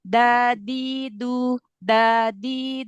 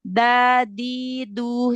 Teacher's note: jangan pakai punggung lidah ya jangan dadu dadu tapi ujung lidah ujung lidah bertemu dengan gusi tempat tumbuh gigi seri atas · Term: huruf Dal